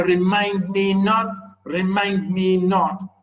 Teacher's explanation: each foot being iambic meaning two syllables long one unstressed followed by a stressed syllable